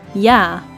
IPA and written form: jaː (Ja)